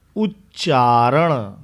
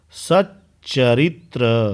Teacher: त के बाद यदि च या छ हो तो त का च हो जाता है